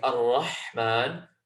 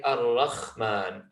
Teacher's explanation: So in the word Ar-Rahman, we have the letter ha, which we've said comes from the middle of the throat, and it's that kind of misty ha, which is a strong ha. If you're not getting it from the middle of your throat and you push it slightly higher, you have a mixing of the letter kha.